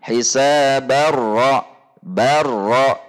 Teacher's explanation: Hisabar ra, barra, langsung masuk ke huruf ra, dan bunyi nun sukun atau tanwinnya betul-betul hilang karena idgham kamil. Dan dari sisi penulisan baik Depak maupun Madinah terjadi persamaan, yaitu ada tanda tasydidnya.